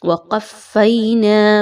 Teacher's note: موسل کتاب وقفینا، اگین فا مشدد ہے، کوئی بھی حرف تشدید شدہ کے ساتھ آ جائے گا تو آپ نے اس کو اس کے پچھلے حرف کے ساتھ مضبوطی کے ساتھ ملانا ہوتا ہے۔ اب چونکہ فا کے اوپر تشدید آ گئی تو قاف اور فا کو مضبوطی کے ساتھ ملائیے